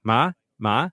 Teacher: my third tone was not low enough